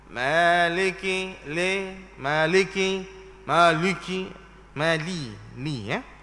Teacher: Nipiskan huruf lam daripada kalimah maliki, li tu. Nipiskan huruf lam itu. Jangan baca dengan tebal ataupun leweh.